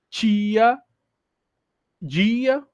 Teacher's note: no nosso dialeto, não temos diante do i a presença do t, surdo, né? Ele sempre vai ser africado.